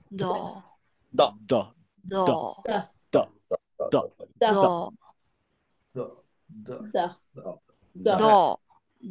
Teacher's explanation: এটা মোটা হয়েছে কারণ হচ্ছে সে আসলে দুই দিকে চাপ দিছে, দাঁতের দুই সাইডে চাপ দিছে।